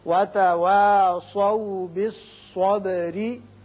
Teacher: را باریک ہوگا اس لیے کہ نیچے زیر ہے · سواد کو پر پڑھیے، با کی صفت قلقلہ